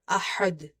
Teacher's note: Ha from the middle of the throat, and dal is having qalqala.